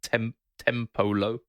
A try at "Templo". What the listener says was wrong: no, it's not Tempolo. There's only one O in it. It's Templo. Like temple, but Templo.